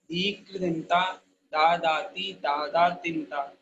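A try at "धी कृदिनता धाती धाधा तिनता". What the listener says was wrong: नो बेटा, धाधाती नहीं, धाती धाधा तिनता।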